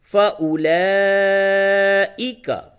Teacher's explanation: تو یہ اولائکا کی جو واو ہے اسے نہیں پڑھا جاتا ہے. رسم الخط کے طور پہ لکھا تو جائے گا لیکن پڑھا نہیں جائے گا.